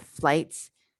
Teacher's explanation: the beginning sound is not just f the beginning sound is the consonant cluster f l